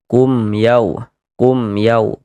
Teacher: bunyi mim sukunnya dibaca jelas. Kemudian tidak didengungkan, maka baca pendek saja. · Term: idhar syafawi